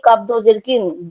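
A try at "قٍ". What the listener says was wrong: তবে একটা ভুল বললেন, সরি, এটা কাপ না, এটা কি বলতে হবে আমাদেরকে। হ্যাঁ, এটাকে মনে রাখতে হবে, এগুলো ভুল হবে না, কব বলবেন এগুলো।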